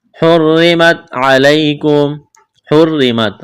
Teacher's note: را کو باریک کرنا ہے، را کے نیچے زیر ہے